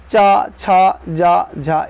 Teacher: च वर्ग क्या होता है स्पर्श संघर्षी होता है